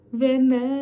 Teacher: mimden sonra uzun Elif gelmiş bunu çekmemiz gerekiyor 4 Elif miktar da çekebiliriz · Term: meddi munfasıl